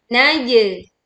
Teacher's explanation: Pantulkan jim sukun dengan suara yang miring. Naje. Ingat anginnya tidak keluar ya.